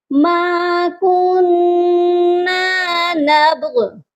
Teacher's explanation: غی کی جو زیر ہے، غائن کی جو زیر ہے، ہم اس کو نہیں پڑھیں گے، غائن کو ساکن کریں گے، یہ پڑھا جائے گا ما کننا نبغ۔